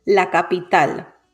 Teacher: the word ends in a consonant that it is not n or s so the stress falls on the last syllable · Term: palabra aguda